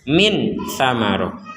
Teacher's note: kalau samar antara jelas dan dengung jadi ada unsur dengungnya tidak 100% dengung